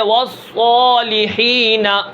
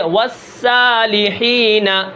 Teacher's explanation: صاد کو ہم موٹا پڑھیں گے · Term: استعلاء اطباق